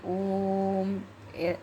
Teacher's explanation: प्लुत स्वर जिसको बोलने में ह्रस्व से तिगना समय लगे उसको कहते हैं हम क्या? प्लुत स्वर कहते हैं। और इसका साइन होता है थ्री जैसा।